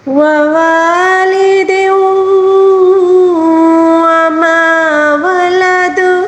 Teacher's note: وَوَالِدٍ، دال کے نیچے جو زیر ہے 2 زیر ہے یعنی تنوین ہے، تنوین کے بعد جب بھی واو آ جائے اس پہ تشدید ہوگا تو یہاں پر ادغام مال غنہ ہے